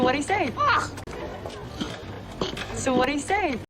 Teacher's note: We are gonna eliminate like the did, and we are gonna have replace it by the D sound, and what is gonna have only the flap T at the end.